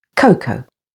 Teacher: notice the stress is on the first syllable